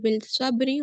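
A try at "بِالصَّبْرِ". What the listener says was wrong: Bil sabri, no. Bis sabri. Why we are saying bis sabri and why we are saying bil marhama? Which is Kamari letter? Lam is Kamari letter.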